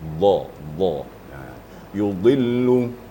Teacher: Sehingganya keluar suara dot itu adalah pada geraham kiri dan kanan.